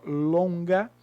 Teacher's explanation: E o ON, O com N, corresponde ao O nasalizado.